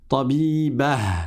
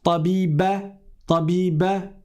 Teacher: ne prononcez pas à la française en omettant le ha. C'est pas tabiba, tabiba.